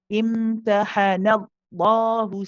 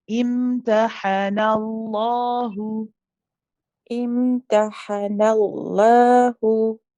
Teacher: When you move from the light noon to the heavy lam, don't stop the sound of your voice.